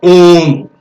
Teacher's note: ओम जो है, ओम जो शब्द है, ओम अपने आप में प्लुत है, क्योंकि ओम ओ का यहाँ पर हम प्लुत स्वर में उच्चारण कर रहे हैं, यानी 3 मात्रा या 3 मात्रा से अधिक का समय ले रहे हैं, इसलिए वहां पर प्लुत स्वर होता है।